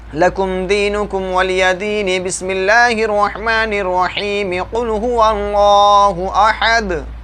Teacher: वस्ल कुल यानी तीनों को एक सांस में पढ़ देंगे, तीनों को मिला देंगे।